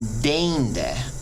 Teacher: You kind of extend it out a little more as EI than you would with long E.